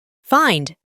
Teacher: Lo pronunciamos con una a antes de i